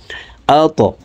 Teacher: আল্লাযী, হামজা ত জবর আত, ত কলকলার হরফ উপরের দিকে ধাবিত করে ধাক্কা দিয়ে উচ্চারণ করব